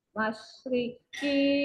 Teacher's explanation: Shinnya sifatnya adalah tafasyi, menyebar.